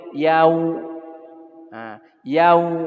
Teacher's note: Nah, kita di waktu ngucapin wau, terutama wau yang sukun, harus terasa bahwa wau itu dari dua bibir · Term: wau sukun